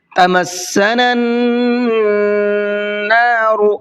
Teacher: اب یہاں دیکھیے نون کے اوپر تشدید ہے اور ہم نے قاعدہ سیکھا تھا نون اور میم پر تشدید ہوتی ہے تو اس میں غنہ کر کے پڑھتے ہیں، تو یہاں پر نون پر تشدید ہے تو یہاں پر غنہ کریں گے۔ تمسنا النار، اس طریقے سے۔